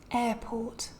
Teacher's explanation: neither of the two RS is pronounced because both of them are before a consonant sound right a port instead we just get these longer vowels pronounced